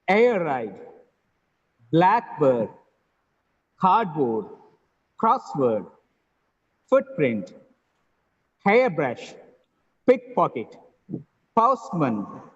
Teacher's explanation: the first elements are stressed